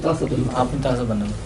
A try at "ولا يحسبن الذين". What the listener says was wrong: تاسبن پڑھا تھا. اچھا لکھا تو یحسبن نہیں ہوا. ولا يحسبن الذين يبخلون بما آتاهم الله من فضله هو خير لهم بل هو شر لهم سيطوقون ما بخلوا به يوم القيامة ولله ميراث السماوات والأرض والله بما تعملون خبير.